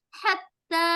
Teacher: منفکین حتی, ہا کو دیکھا ہم نے, حتی حلق کے بیچ سے آواز نکلے گی. حتی, تا کے اوپر شد ہے تو 2 بار اس کو ادا کریں گے